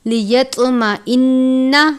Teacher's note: طوا پر قلقلہ کرتے ہیں اور طوا کو پر بھی پڑھتے ہیں ، طوا کو تا کی طرح نہیں پڑھنا، لیت نہیں پڑھنا